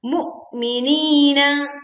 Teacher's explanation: Wahum ala, hum dibaca jelas, ala 2 harokat panjangnya sama dengan malu, ma yaf'aluna, sama-sama 2 harokat, bil mu'minina, kita tekan lam sukun, kemudian juga kita menahan suara di hamzah sukun, mu'minina, suara dan aliran angin terputus ya, tertahan. Minina.